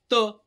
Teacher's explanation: त म्हणलं तर आपल्या दाताच्या मागच्या बाजूला ना आपली हे जीभ लागते म्हणून म्हणायचं त्याला दंत्य. आपल्या जिभेचा शेंडा जो आहे तर त्या दाताच्या माग त असं त, थ, द, ध, न, ल, स.